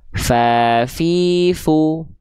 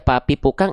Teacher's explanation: ketika kita melafalkan huruf fa, dia seringkali tertukar dengan huruf P.